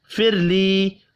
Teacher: را ساکن سے پچھلے حرف کے نیچے زیر ہے، اور را کو باریک پڑھیں گے. یا مدہ ایک الف کے برابر کھینچ کر پڑھیں گے.